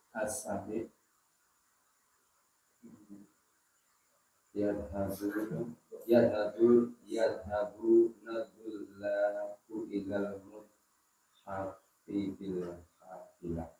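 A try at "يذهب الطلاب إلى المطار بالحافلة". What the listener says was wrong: Nah, hati-hati panjang pendek ya ketika baca yadhabunatullabu, panjang pendeknya ceto ya. Yadhabunatullabu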